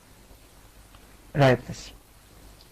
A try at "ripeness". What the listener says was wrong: No, you said ripeness again. Ripe. Ripeness. You sounded almost Italian. Italians do that. Ripeness. It's a ripe tree. But ripeness, because the E is silent.